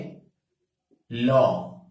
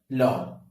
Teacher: বাংলা বর্ণমালায় যে সকল ব্যঞ্জনধ্বনি উচ্চারণের সময় শ্বাসবায়ু জিহ্বার দুপাশ দিয়ে বাইরে বেরিয়ে আসে তাকে বলা হচ্ছে এই পার্শ্বিক ধ্বনি